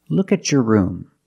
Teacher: Let's look at some other situations where T makes a ch sound. When you have a T before a Y in two separate words and you link the pronunciation of the two words, you will hear the ch sound.